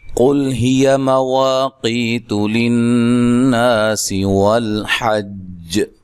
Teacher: قاف کو موٹا ادا کرنا ہے، لام کو ہلانا نہیں ہے اور باریک پڑھنا ہے، ہیا، کسی کو لمبا نہیں کرنا۔